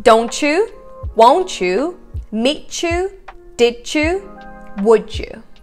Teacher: it kind of blends together and it becomes this a little bit like a ch sound